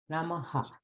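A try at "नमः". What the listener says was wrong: It's only air. It should not be Namaha. It's wrong. Namaha is, you're saying the letter ha. That is not Visarga.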